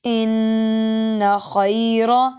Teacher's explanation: خا موٹا ہے را بھی موٹا ہے، ان خیر، خا موٹے حروف میں سے اور را پہ جب زبر ہو اور پیش ہو تو یہ موٹا پڑھتے ہیں۔